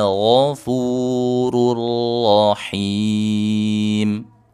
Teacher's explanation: Huruf ghain berbaris fathah ditebalkan.